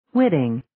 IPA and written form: 'wɪtɪŋ (Witting)